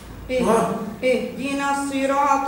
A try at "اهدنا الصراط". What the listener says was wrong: اهدنا الصراط. ليست اهدنا. اهدنا الصراط. لماذا تقول السو؟ لماذا هذا الاشمام؟ انت تشمين الحرف فتقولين اهدنا الصراط. تمشي به بداية الضبط بعد ترجع به للكسر. لا. اهدنا الصي. الصي. هكا تأثرتي بذلك النغم. إذا اهدنا الصي. الصي. صي. صا. صو. هذه حركة الفتح. صا تباعد الفكان. حركة الضم. صو استدارة الشفتين. حركة الكسر. صي يتباعد الفك قليلا.